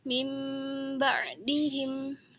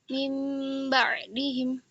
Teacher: Dia bacaannya disertai dengan gunnah dan juga ikhfa. Dia didengungkan serta disamarkan. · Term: iqlab